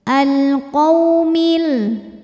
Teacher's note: karena ada wau sukun didahului harakat fathah maka dibacanya lembut · alif lam menghadapi huruf qamariyah yaitu qaf, maka lam dibaca jelas. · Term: harfulfulin, alif lam qamariyah